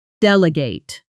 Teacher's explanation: it's stressed on the last syllable, with the ending sounding almost like gate